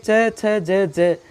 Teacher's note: इनका अपेक्षाकृत बाकी व्यंजनों से ज़्यादा समय लगता है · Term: स्पर्शी संघर्ष व्यंजन